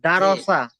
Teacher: পুর করে উচ্চারণ করতে হবে, যেমন দাল যাবার দা, র যাবার র, সিন যাবার সা, দারসা। তাও মুখটা গোল করেন উচ্চারণের সময়